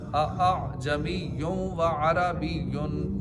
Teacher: एक लफ्ज़ में तस्हील का कायदा यह कि नरमी करना, नरमी करना है, यानी दूसरे हमजा को नरमी के साथ पढ़ेंगे